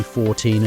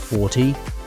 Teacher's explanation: teen numbers have stress on the second syllable and multiples of 10 on the first syllable